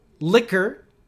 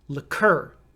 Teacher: So you want to say the second part stronger. There are a lot of letters, but just say it like it's C-U-R.